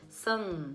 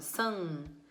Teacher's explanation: Quando eu falo samba, esse sam, ele sai pelo nariz. Se você puser a mãozinha aqui, ó, você vai fazer sam. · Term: nasalização